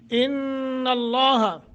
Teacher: لفظ اللہ کو تفخیم یعنی منہ بھر کر پڑھیں گے